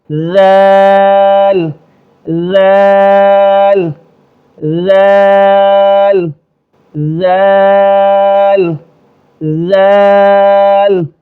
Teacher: تھوڑی سی زبان نکالی، دونوں دانتوں کے درمیان دی اور ایک الف سے زیادہ کھینچیں گے